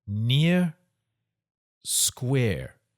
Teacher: the word near and square, the vowel sounds are the same in New Zealand English